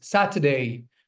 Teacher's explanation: you're dropping the R sound completely over here